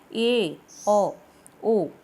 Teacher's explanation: अर्धसंवृत मतलब कि संवृत स्वर तो जब मुंह बंद करके तकरीबन बोले जाते हैं, इसमें मुंह आधा खुला होता है।